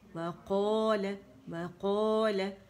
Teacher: قا موٹا ہے، لام باریک ہے